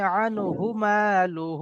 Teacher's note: এখানে যে হায়ের উপরে পেশ আছে এটা টান হবে না